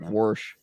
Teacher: don't put like an R in wash